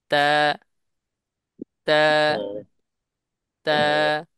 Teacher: এই তা উচ্চারণের সময় আমরা ঠোঁট গোলাকৃতি করতে পারবো না ক্লিয়ার বুঝাইতে পারছি ঠোঁটটা গোলাকৃতি করতে পারবো না দুই দিকে বিস্তৃত